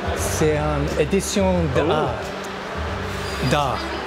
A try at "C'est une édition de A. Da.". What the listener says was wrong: You don't pronounce the T. Silent.